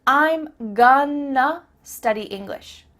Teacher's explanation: I'm going to study English. That word to simply becomes a.